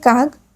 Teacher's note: অঘোষ বর্ণ ঘোষ বর্ণে পরিণত হলে তাকে ঘোষীভবন বলে